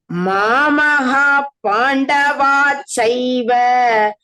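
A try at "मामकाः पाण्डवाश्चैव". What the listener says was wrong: Now you corrected your Kima Kurvata, but Mamaka became Mamagha.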